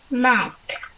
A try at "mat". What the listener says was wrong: Very good.